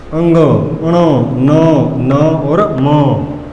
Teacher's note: नासिक्य व्यंजन का अर्थ है दोस्तों कि जो नाक से बोले जाते हैं, जिनको नाक से बोला जाता है।